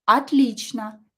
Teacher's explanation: Again, O is not stressed, pronounce it as A.